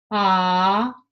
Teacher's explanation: notice how the soft palate and the back of your tongue are very far apart